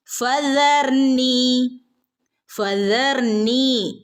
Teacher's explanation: ആളുകൾ സാൽ പറയുമ്പോൾ സ എന്നുള്ള സൗണ്ട് ആണ് വരുന്നത് അപ്പൊ ശ്രദ്ധിക്കുക ട്ടോ നാവിന്റെ അറ്റം മുകളിലുള്ള പല്ലിന്റെ അറ്റത്തിൽ തട്ടണം